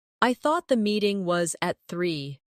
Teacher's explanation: Do you hear the soft connection between meeting and was?